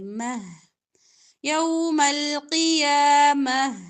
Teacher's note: وقف کریں گے ہا والی تا پر تو ہا کی ہی آواز نکالیں گے